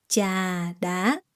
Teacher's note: Phở gà, and trà đá, falling tone, rising tone.